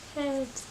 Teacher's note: I use an audible H.